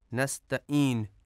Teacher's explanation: عین کی جگہ پہ حمزہ ادا کیا جاتا ہے، نستعین، جو کہ غلط ہے۔